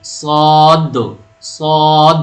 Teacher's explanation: آواز بھاری ہوتی ہے اور گہری ہوتی ہے